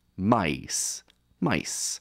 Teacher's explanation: changed from a solid vowel sound like e to a combination of two sounds like I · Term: diphthong